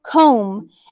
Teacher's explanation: it has an mb at the end of comb but we never say the b sound it's silent it's sneaky so we're going to continue with the